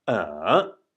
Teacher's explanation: going from the middle of it or just below the middle of your voice to the bottom and then up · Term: third tone